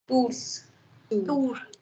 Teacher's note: The S is not sounded.